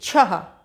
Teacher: छ के संग ह की ध्वनि निकली। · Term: अः की मात्रा